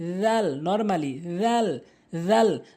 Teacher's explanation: জিহ্বার আগার সামনে দুটি দাঁতের আগাতে লাগাবেন